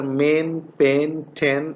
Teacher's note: it's pronounced with the lips in between half closed and half open so that's the lip position and unrounded obviously this is produced in the front part of the vocal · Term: short vowel